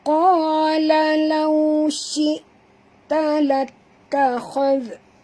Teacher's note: muncungkan mulut sahabat semua kerana waw sifatnya lin